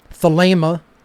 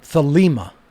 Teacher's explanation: Thelema is with a long A sound in the second syllable